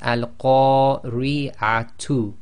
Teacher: you change the Tamar into a ha sakin and this is the soft ha from the bottom of the throat